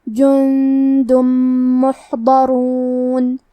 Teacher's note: پھر حرف المیم آتا ہے کلمت محضرون. میم حروف الادغام بغنہ میں سے ہے تو ہم تنوین کو میم میں ملا کے غنہ اور تشدید کے ساتھ یہ حکم کو ادا کریں گے · کلمت محضرون میں حرف الحا کی ادائیگی حلق کے درمیان والے حصے سے ہے. کیونکہ یہاں حا ساکن ہے تو ہمیں حا کو ظاہر کرنا ہے.